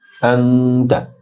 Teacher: আনতা নুন অনস্বরে গুন্না